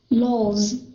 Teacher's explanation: Notice the S turn into a Z. If those of you who don't know why, we've mentioned it many times that if an S comes after a voice sound, the S will become a Z. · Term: Z sound